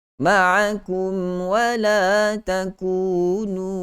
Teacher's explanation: wala dua harakat, takunu dua harakat, mad asli kedua-duanya · mim dan waw berada pada satu makhraj yang sama, pada makhraj bibir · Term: mim mati bertemu dengan waw